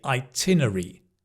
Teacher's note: Often, we don't say itine-rary, we say itinerary. So the 'rary' becomes 'ry'